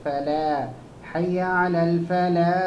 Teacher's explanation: لام یہاں پر موٹا آ رہا آپ کا، باریک آنا چاہیے. حی علی الفلاح نہیں، فلا، اوکے، فلا، حی علی الفلاح، اس طریقے سے.